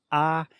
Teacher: So this is the ah. That means that your mouth is very open and your tongue position is low. So you are opening your mouth wide.